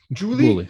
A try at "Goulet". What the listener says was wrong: Goulet. With a G. Soft G. Or hard G?